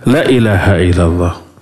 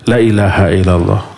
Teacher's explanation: Kalau la dibaca pendek artinya pasti. Kalau la dibaca panjang artinya Tidak, umpamanya la ilaha illallah. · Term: salah panjang, salah pendek